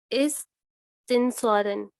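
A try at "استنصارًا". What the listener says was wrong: Very good, इस्तिंसारन। आगे पढ़ें।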